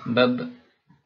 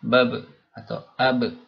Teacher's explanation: Ketika disukun huruf ba-nya dan sebelumnya ada huruf yang berharokat, tidak ada nafas yang keluar ya. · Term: huruf jahar